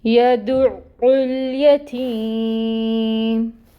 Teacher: عین کے مخرج پر جانا ہے اور پھر عین کی پیش کو پڑھنا ہے۔ تو 2 عین پڑھنے ہیں ہم نے، 1 ساکن اور پھر 1 پیش کے ساتھ۔ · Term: عین مشدد